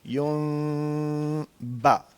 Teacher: پہلے آپ نے دونوں ہونٹوں میں ہلکا سا فاصلہ رکھنا ہے ایک آواز کے برابر. جیسے ہی وہ ختم ہو جائے گی, غنہ ختم ہو جائے گا, تو پھر ہونٹوں کو زور سے دبا کے با نکالنا ہے